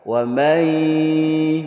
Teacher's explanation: Jadi bacanya harus berdengung. Nunnya tidak terbaca karena idgham, yaitu masuk ke huruf ya. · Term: idgham bi gunnah